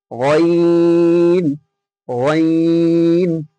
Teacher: হালাকের বা কণ্ঠনালীর শেষ ভাগ হতে উচ্চারিত হয় গইন